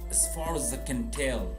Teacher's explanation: Also notice the as is unstressed, short.